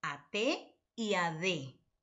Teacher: se articulan tocando con la punta de la lengua los dientes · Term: dentales